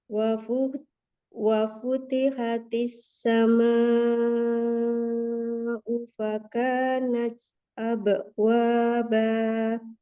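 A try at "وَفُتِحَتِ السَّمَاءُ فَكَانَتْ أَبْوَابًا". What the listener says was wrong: Qalqala, abe, nggak boleh abe. Kalau abe seperti ada hamzanya. Abe, abe, abe.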